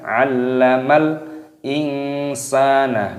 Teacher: nunnya berharokat sukun, bertemu dengan sin, diikhfakan, disamarkan